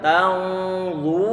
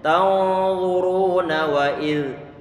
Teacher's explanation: Ini wawu sukun sebelumnya dhammah, maka ini dia adalah bacaan mad. Kalau kita berhenti pada huruf nunnya, otomatis nunnya kita sukunkan. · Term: Sukun yang arid